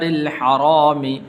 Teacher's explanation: را کے نیچے زیر ہے تو اس لیے اس کو باریک کر کے پڑھیں گے